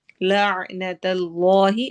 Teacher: اس میں جلالہ کو ہم موٹا ہیوی کر کے پڑھیں گے